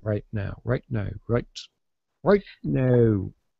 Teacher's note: the T at the end of a word which is not really released but held instead